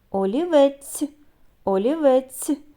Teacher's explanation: де ми чуємо звук ц так у кінці слова позначаємо двома рисками це М'який приголосний